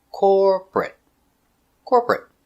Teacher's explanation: two syllables not three not corporate two corporate corporate stress on the first syllable